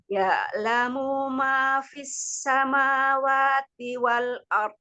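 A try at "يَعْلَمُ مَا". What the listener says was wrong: Ya'lamu ma, munya pendek.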